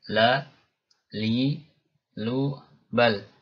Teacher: Ketika diucapkan suara, ya, tidak terlalu tertahan, juga tidak terlalu mengalir. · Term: tawassut